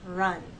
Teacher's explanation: With R. There's a gentle rounding of the lips, but you hold that position until you get to the next sound. Run.